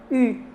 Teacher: Em francês, só uma curiosidade, é que a gente tem esse I arredondado